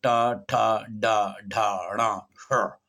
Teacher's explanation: अब इसमें जब जिह्वा का अग्रभाग, नीचे का भाग, मतलब जीभ का जो अगला हिस्सा है उसके नीचे का भाग, इसको ऊपर उठाते हुए पीछे की ओर मोड़कर और मध्य स्पर्श करते हुए जिन व्यंजनों को बोला जाता है, मतलब इनको बोलने के लिए जीभ को ऊपर की ओर मोड़ करके पीछे मोड़ना होता है और जीभ का जो निचला हिस्सा है उसको ऊपर तालु के मध्य में स्पर्श किया जाता है, तब ये व्यंजन उच्चारित होते हैं। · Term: मूर्धन्य व्यंजन